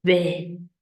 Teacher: This is a breathy voice. You can kind of hear that breathiness towards the end.